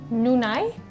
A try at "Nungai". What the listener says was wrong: You can't say nai, like it's ngai. Ngai.